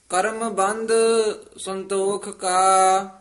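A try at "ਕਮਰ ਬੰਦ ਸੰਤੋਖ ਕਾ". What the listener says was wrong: करम बंद नहीं है कमर बंद संतोख का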